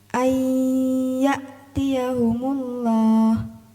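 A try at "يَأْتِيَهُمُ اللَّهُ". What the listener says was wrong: Tinggal akhirnya ada ya'tiyahumullah. Humullah. Ada huruf H kan di akhir itu? Harus dibaca juga.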